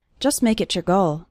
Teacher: the T at the end of the word just is barely pronounced